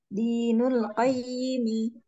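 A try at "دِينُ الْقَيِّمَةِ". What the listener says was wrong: Dinul qayyi? Tadi kayak saya dengarnya kasroh ya. Ti. Dinul qayyimati. Ya, kalau wakaf, kalau berhenti di situ berubah jadi seperti apa? Ya, taknya berubah menjadi huruf.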